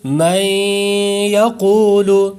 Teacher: نون ساکن کے بعد حرف یا آیا، تو اس وجہ سے ادغام یرملون کا قاعدہ لگ گیا اور ہم نے غنہ کر دیا